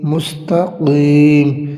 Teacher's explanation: مستقیم، اس میں قاف یہ موٹا کیا جائے گا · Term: حروف مستعلیہ